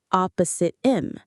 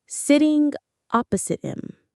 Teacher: When we say this naturally, we almost never pronounce the H in him. It disappears. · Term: H dropping